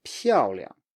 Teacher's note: You can still say it very lightly like that. So make sure the stress is really on the first syllable.